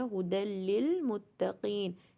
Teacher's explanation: ھدل میں دیکھیے، ھدل میں دال فتحتین لام کے ساتھ کنیکٹ ہو رہا ہے، ھدی للمتقین، یا ساکن سے پہلے زیر آ رہا ہے تو یہ 2 کاؤنٹ ہو رہا ہے۔